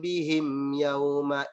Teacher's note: Inna rabbahum, itu ditahan. Sedangkan huruf mim mati bertemu ya itu tidak dipanjangkan karena hukum bacaannya adalah izhar syafawi.